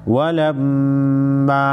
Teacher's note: मीम मुशद्दद पर गुन्ना होगा